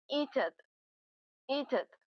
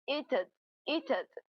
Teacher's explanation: Notice the extra schwa sound there, which adds an extra syllable.